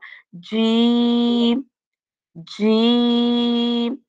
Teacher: ہماری زبان اوپر تالو کے ساتھ بالکل لگ گئی ہے، جڑ گئی ہے۔ جیم، تھوڑی ٹھیک ہے نا، بالکل ساتھ میں پریس ہو گئی ہے۔